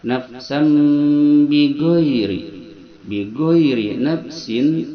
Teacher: setiap nun mati atau tanwin menghadapi ba dia n diganti m sehingga kita baca macanya di antara gunah dan ikhfa nafsam biri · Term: iqlab